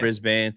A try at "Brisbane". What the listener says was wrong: don't say the A. Brisbane. There you go.